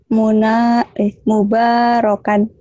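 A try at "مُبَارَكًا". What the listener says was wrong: Iya, lupa titik gitu ya. Jauh ya, munarokan adalah mubarokan tuh. Cuma beda titik doang gitu.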